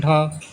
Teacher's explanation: सघोष महाप्राण में आता है ढ